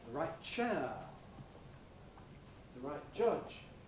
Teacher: the phoneme T is sometimes realized, sometimes pronounced as a glottal rather than as an alveolar plosive. This is, in fact, very general when we have a word that ends in T, like right, and the next word begins with a consonant. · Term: glottal stop